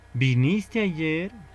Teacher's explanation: La entonación de esa pregunta es ascendente, es decir, de abajo hacia arriba, ¿no? Va a ser de esa forma.